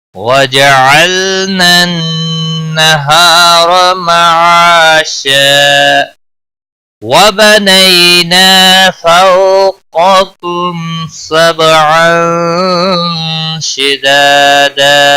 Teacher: تنوین کے بعد حروف اخفا کا شین آیا ہے، اخفا حقیقی ہوگا · کم میم ساکن کے بعد سین آیا ہے اظہار شفوی ہوگا